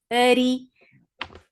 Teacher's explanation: For kasra, give e sound. The sound is short.